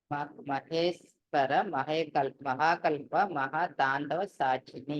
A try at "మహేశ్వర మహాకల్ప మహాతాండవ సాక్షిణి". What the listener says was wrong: ఇంకొంచెం మీరు రాగంలో కూడా అనాలి. ఆ రాగం రావాలి, అప్పుడు వస్తేనే మీకు ఆ నామం మీకు నామంలాగా అనిపిస్తుంది, లేకపోతే పూర్తిగా అనిపించండి.